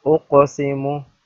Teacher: Qaf is bold and make qalqala on qaf because it is one of the qalqala letters.